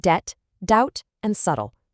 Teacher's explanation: And for the T rule, we've got debt, doubt, and subtle. Again, no B sound. It just jumps straight from the vowel to the T.